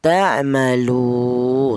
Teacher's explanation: panjangnya yaitu satu alif atau dua harakat atau dua ketukan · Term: mad thobi'i